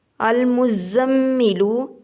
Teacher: زا سیٹی والا حروف ہے، اس کو سختی سے ادا کریں گے۔ میم گنہ ہے، شد ہے، شد کی وجہ سے گنہ ہوگا۔